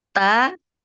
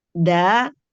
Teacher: ta huruf yang harus kita keluarkan dengan mengeluarkan udara sementara da adalah huruf jaher yang tidak boleh keluar